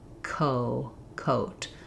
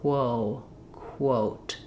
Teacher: When I'm saying quo, I have to start k with my mouth open and then briefly close my lips before the O.